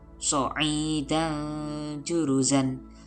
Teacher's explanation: Tanwin bertemu dengan huruf jim dibaca samar dan dengung, ikhfa.